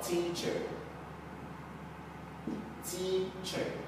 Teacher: Stressed on the first syllable.